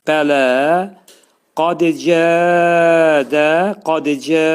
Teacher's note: burada qaf hərfi demək dolu oxunacaq, qalın oxunacaq.